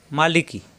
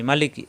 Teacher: মালিকি এখানে কোন টান নেই